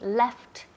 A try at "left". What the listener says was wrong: Yes, left. Left, para que se oigan la T, la última letra. Ok, so importante aquí la pronunciación July, July y también left, left, que suena esa T.